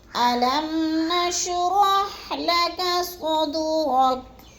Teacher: جیسے علم نشرح لک صدرک۔ لک صدرک، صاد کو پر کر کے پڑھنا ہے اور دال کو ہلانا ہے کیونکہ یہ حروف قلقلہ میں سے ہے